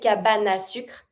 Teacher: Because the E from cabane is mute and I have a vowel that follows, I can just connect it. So you're always going to avoid the E.